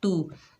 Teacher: ता के ऊपर पेश बगैर खींचे पढ़ेंगे तू, ता बारीक हर्फ है